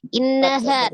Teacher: Innaha nun tasdidnya digunnahkan ya, akmal Gunnah.